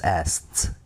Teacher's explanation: Tapi kalau asked gitu bacanya ask, mati T guys